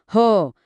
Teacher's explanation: ह आहे महाप्राण त्याच्या उच्चारात फुफुसातून जास्त हवा बाहेर पडते